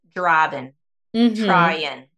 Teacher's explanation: I notice that in your accent, you tend to drop the G a lot more.